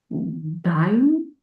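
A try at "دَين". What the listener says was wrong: Dain, short a. Short a. Dain. Dain. Not dine, dain.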